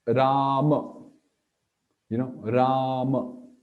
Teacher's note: So Ra is Trivikrama, it's long A, and Ma is just a Vamana A. So we don't say Rama, that would be, that would be a simple Vamana A and Vamana A, Rama.